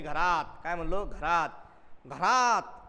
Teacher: आता या अनुस्वाराचा उच्चार आपला जसा पाहिजे तसा जाणवत नाही, म्हणून याला म्हणायचं अनुनासिक.